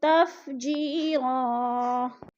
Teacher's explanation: تنوین وقف کی صورت میں ایک زبر میں بدل کر پڑھیں گے